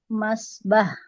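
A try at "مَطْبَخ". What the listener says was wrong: Matobah, matobah ya, bukan masbah tapi matobah. Mato pakai to, Bu.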